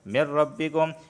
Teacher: نون ساکن کے بعد را آیا ہے تو یہاں پر صرف ادغام ہوگا غنہ نہیں ہوگا کیونکہ لام اور را میں غنہ نہیں ہوتا، ادغام ہوتا ہے۔